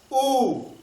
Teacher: तो जब हम स्वर का उच्चारण करते हैं और ओठ जो है गोल रूप धारण कर ले, जैसे ध्यान से देखिएगा, ऊ और बड़ा ऊ। जब ऊ का उच्चारण हम लोग करते हैं तो ओठ जो है वृत्ताकार हो जाता है, आप भी बोल कर देख सकते हैं ऊ, ठीक है।